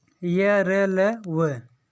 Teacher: इनका उच्चारण जो है जीभ, तालु, दांत और ओठों के परस्पर सटाने से होता है, किंतु कहीं भी पूर्ण स्पर्श नहीं होता। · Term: अंतस्थ व्यंजन